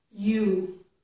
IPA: ju